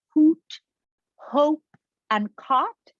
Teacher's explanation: They're all rounded vowels. And they're different in terms of the height of the tongue.